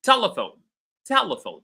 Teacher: the syllable te, is receiving all the stress